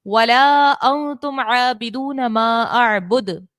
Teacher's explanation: نون ساکن کے بعد تا ہے حرف اخفا کا، تو یہاں پر ہم نے اخفا کا قاعدہ لگانا ہے اور غنہ یہاں کریں گے